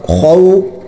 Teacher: خو کا جو لفظ ہے وہ موٹا ہوتا ہے اور یہ حلق سے نکلتا ہے، خو نکالنا ہے، اس میں احتیاط کرنی چاہیے کہ کھے کی طرح یہ لفظ نہ نکلے، کھو نہیں ہونا چاہیے بلکہ حلق سے اور موٹا۔ خو واو زبر خو، خو یا زبر خوئی، خو خوئی۔